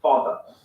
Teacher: that the final r sound is not pronounced in british english father ends in a simple schwa vowel